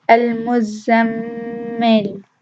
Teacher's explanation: Another example is al-muzammil. The first meme has Ghunnah, but it's not prominent because it doesn't have shadda. The second meme has a very prominent Ghunnah.